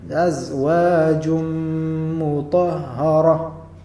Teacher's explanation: idgham tanwin ketemu dengan m makanya didengungkan